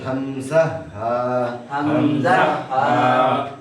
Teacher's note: একবার হলকের শুরুর স্থান থেকে, ভিতর থেকে একবারে উচ্চারণ হয়ে আসলো।